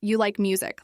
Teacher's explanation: said with a flat or falling tone sounds like a statement. It's a simple fact, not a question.